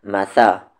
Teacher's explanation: یہ سا کا مخرج، سامنے والے دانت کا کارنر اور زبان کا کارنر